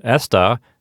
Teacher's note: the word esta has the accent on the first syllable